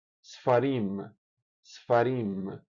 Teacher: vogal curtíssima, às vezes nem sequer é ouvida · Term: shva